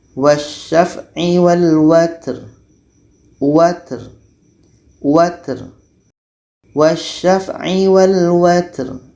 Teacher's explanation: Pertama ta. Ta ini sifatnya hamas, berangin. Jadi kita mesti keluarkan anginnya.